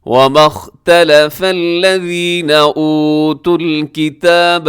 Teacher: یہاں پہ خا موٹا ہے، تا لام فا سب باریک ہیں